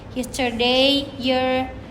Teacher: The sound is made by raising the center of the tongue toward the soft plate, and lips are natural.